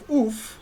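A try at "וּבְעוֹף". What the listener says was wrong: That's a cholam, uv oaf. Oaf. Oh,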